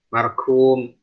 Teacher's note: Jadi qaf sama kaf taqarrub, berdekatan makhrajnya.